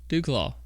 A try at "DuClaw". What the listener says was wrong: Take the U out. Put a flat A in it.